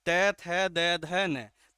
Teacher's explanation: तय वर्ग के सभी वर्ण कहाँ से उच्चारित किए जाते हैं, दंत से